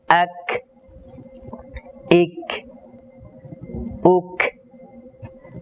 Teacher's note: হামসটি কাফ এবং তা এই দুইটা হরফের মধ্যে খুব দুর্বলভাবে আদায় হবে সামান্য শ্বাসের আওয়াজ হবে এক ইক উক কেউ যদি শ্বাসের আওয়াজ এখানে বেশি দেয় তাহলে কিন্তু সিদ্দত বাকি থাকবে না।